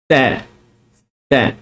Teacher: huruf ta ni keluar daripada hujung lidah, yang mana hujung lidah kita itu dikeluarkan sedikit, kemudian ditekan pada gigi kacip sebelah atas. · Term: makhraj huruf ta